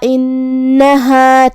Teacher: کلمت انہا الف کے نیچے زیر ہے تو ہم حمزہ کو نیچے سے ادا کریں گے، حمزہ کی ادائیگی حلق کے نیچے والے حصے سے ہے، پھر حرف النون ہے اور اس پہ تشدید ہے تو 2 حرف کے برابر ہمیں حرف النون کو پڑھنا ہے